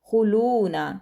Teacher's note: دال پر کلکلا کریں گے، حروف کلکلا میں سے ہے، خوا کو موٹا پڑھیں گے۔ خلون، لام کو لمبا کریں گے کیونکہ آگے واو مدہ ہے۔